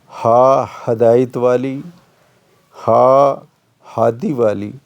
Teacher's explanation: ہا 2 آنکھوں والی ہا ہدایت والی، ہا ہادی والی، یہ حلق کے نیچے سے اور سینے سے ادا ہوتی ہے